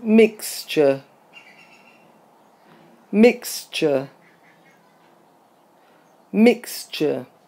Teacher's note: remember that T-U-R-E is usually pronounced ch, such as in literature, temperature, mixture